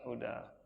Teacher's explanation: Kalau huruf ikhfanya sin berarti sudah membentuk huruf sin ya. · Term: dibaca samar